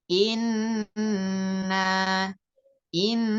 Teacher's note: berdengung suara karena melewati rongga hidung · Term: gunah